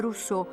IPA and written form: rusˈso (Rousseau)